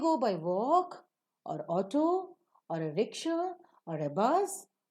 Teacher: for all the other Alternatives that you are providing you raise up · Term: rising tone